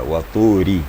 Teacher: Sedangkan ra baris di bawah itu tipis bacaannya, tarkik.